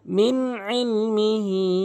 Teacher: আইদিহিম ওয়া মা খালফাহুম ওয়ালা ইউহিতুনা বিশাইইম মিন ইলমিহি ইল্লা বিমা শাআ। এখানে মিন কখনোই গুণনা করবেন না, এখানে নুন সাকিনের পর আইন এসেছে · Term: স্পষ্ট